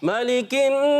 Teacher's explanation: نون مشدد میں ایک الف کا غنہ بھی کریں گے